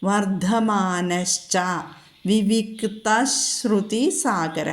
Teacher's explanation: വിസർഗത്തിന് ശേഷം ച വന്നിട്ടുണ്ടെങ്കിൽ അവിടെ വിസർഗം ലോപിച്ചിട്ട് അവിടെ ശ എന്നുള്ള അക്ഷരവുമായിട്ടാണ് കൂട്ടിച്ചേരുക. ചായ്ക്ക് മുൻപ് വിസർഗം വന്നാൽ അത് ശ എന്ന് നമ്മൾ കൂട്ടിച്ചേർത്ത് ചൊല്ലും.